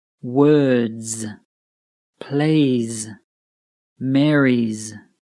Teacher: this sounds like a Z or Z which is a buzzing sound